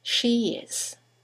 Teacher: She is interested in it. And there is a semi vowel y that links the vowel at the end of she to the vowel at the beginning of is.